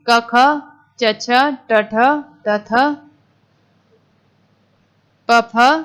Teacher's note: जिन ध्वनियों के उच्चारण में स्वर तंत्र में कंपन नहीं होता उन्हें अघोष वर्ण कहते हैं